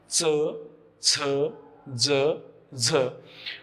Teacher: म्हणजे तोंडामध्ये जेथे आपण चिंच किंवा चॉकलेट चघळतो त्या भागाला स्पर्श करून जर च छ ज झ या वर्णांचा उच्चार होत असेल तर तो उच्चार तालव्य उच्चार मानला जातो. तर च छ ज झ या वर्णांचा उच्चार करताना जर दाताच्या पाठीमागे स्पर्श होत असेल तर तो उच्चार दंत तालव्य उच्चार मानला जातो.